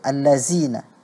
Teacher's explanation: huruf zal terganti menjadi huruf zai